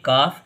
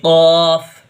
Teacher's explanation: اس کی آواز ہلکی سی نکلتی ہے قاف، اور یہ اس کی آواز حلق سے نکلتی ہے